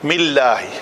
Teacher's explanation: جلالہ کا لام جو ہے وہ پتلا ہی ہوگا، پر نہیں ہوگا